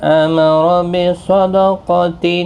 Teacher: تنوین کی آواز میم میں بدل جائے گی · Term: قلب